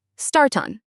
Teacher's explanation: And for start on, we link the t to the o.